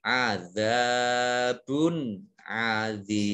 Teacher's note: Azabun zal fathah alif atau zal alif fathah, ini mat tobi'i 2 harokat. Kemudian ba dhammah tanwin bertemu dengan huruf ain, ini bacaan izhar, dibaca jelas.